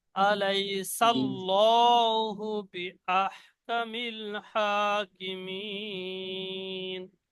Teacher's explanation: আগে জবর এসেছে, তাই আল্লাহ শব্দের লামকে পুর অর্থাৎ ল পড়তে হবে।